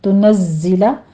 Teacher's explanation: زائی کی آواز سیٹی کے ادا کرتے ہوئے اس کی تشدید ادا کریں گے